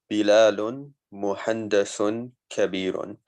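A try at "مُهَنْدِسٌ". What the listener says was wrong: Muhandis. It's muhandis with a kasra.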